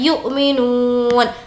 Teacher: नू को खींचेंगे, वाव मद्दा है